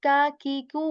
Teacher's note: the back part of our tongue, it touches the soft as well as, kind of the area of our hard palate as well. It's like in the middle area, soft as well as the hard palate.